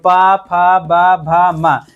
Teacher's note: पा वर्ग बोला जाए तो पा, फा, बा, भा, मा। इसके उच्चारण में यानी हमारे दोनों ओष्ठ होते हैं वो आपस में सटते हैं, तभी आप बोल सकते हैं।